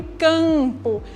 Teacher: A vogal A tem esse som mais nasalizado porque ela está acompanhada da letra M